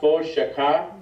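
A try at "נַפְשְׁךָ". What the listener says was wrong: No, there's two shvas there. The first one is, silent. The second one is vocal. It's a shva there. It's a silent shva.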